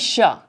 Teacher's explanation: श ध्वनि का उच्चारण स्थान क्या है? मुंह से आवाज निकालिए श। कहां पे है? आपके तालु में